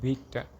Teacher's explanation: a front high unrounded lax vowel represented by the symbol called small capital E.